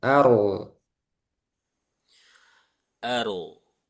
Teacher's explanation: Ro sukun sebelumnya fathah tebal juga.